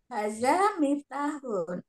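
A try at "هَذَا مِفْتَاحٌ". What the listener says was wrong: Zalnya jangan terlalu kayak za ya Umi, bukan haza, tapi za, hadza.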